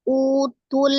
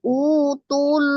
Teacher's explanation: Jadi tidak dipanjangkan tu-nya, langsung disukunkan ke huruf lam. Utul. Jadi bukan utul.